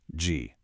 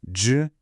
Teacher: Can you hear that deeper resonance? G, J. That entire difference is created just by curling your tongue back. That's the retroflex action.